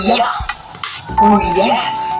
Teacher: made with the middle of the tongue raised toward the hard palate.